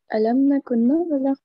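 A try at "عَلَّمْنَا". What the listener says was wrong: अलमना, लाम के ऊपर शद्दा है.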